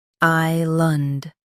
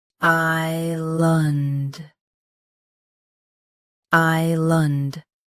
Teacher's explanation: I-land Both US and UK have the same pronunciation of this word. Stress I. Keep the land soft and clear.